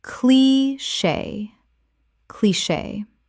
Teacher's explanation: 2 syllables with the CH making a SH sound.